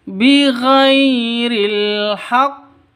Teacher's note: Bighairi ghai sifat lin lentur, tidak boleh disentak, tidak boleh dipanjangkan.